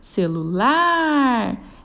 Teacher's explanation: Ela tem a última sílaba tônica, o lar. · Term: oxítona